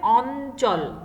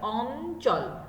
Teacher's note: ইয়র সাথে যদি চ ছ বর্গীয় জ এবং ঝ এই চারটার যে কোনো একটি যুক্ত অবস্থায় থাকে তাহলে তার উচ্চারণটা হবে দন্ত নয়ের মতো